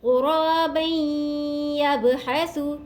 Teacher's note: فبعث اللہ غرابا يبحث، رولی زبر الف مدہ الف کی مدار کیجیے گا، رو کو موٹا پڑھیں گے، رو کے اوپر یہاں زبر ہے، دو زبر کی تنوین کے بعد یا مشدد ہے، دو زبر کی تنوین کو یا مشدد سے ملائیں گے غنّے کے ساتھ